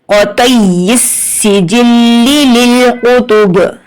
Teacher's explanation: اب جب ہم وقف کریں گے تو یہاں پر با کو جھٹکا دیں گے کیونکہ یہ حروف قلقلہ ہے